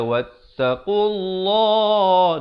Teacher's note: Lafzul jalalah datang sebelumnya baris dhammah, baca tebal. Jangan baca wattaqullah.